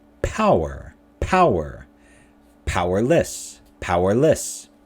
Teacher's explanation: power powerless stress is on the first